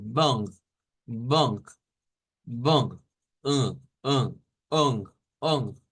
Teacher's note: se parece un poco a la n pero la fuerza la debemos de hacer en la nariz acá por eso es un sonido nasau o nasal entonces bong bong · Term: vocal nasalizada